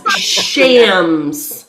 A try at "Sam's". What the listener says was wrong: No, you're putting the H in the wrong spot. It's before the M, so it's Sam's Steakhouse.